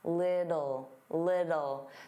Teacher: native speakers, including me, generally pronounce the T's as soft D's.